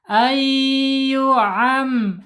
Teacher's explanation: Nunnya dihilangkan harus dilebur ke huruf ee ya. Ya. Idgham bighunah.